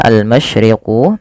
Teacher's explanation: alif lam qamariyah dibaca jelas suara lamnya